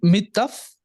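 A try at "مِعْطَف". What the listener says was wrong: ये मितफ नहीं है। बाद आयन भी है ना, आयन।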